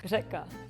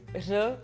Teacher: it's not like R, but it's kind of like R with like your tongue is like vibrating